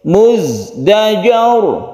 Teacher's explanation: yang ini ditebalkan roknya karena sebelumnya ada fathah, dinamakan rok tafkhim